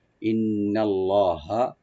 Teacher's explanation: ইন্নাল্লাহা লফজ জালাল এখানে আমরা একটু মোটা করে পড়বো, ডিপ করে, ইন্নাল্লাহা কানা, কানা কাফটাকে ওপেন করে একটা টানবেন, নুনে কোনো টান নাই, কানা আলিমান, আলিমান আইনটাকে রাইট দিবেন, লি একালে টানবেন।